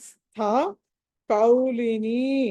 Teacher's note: స్థ లో థ అన్నది మహాప్రాణము ఒత్తి పలకాలి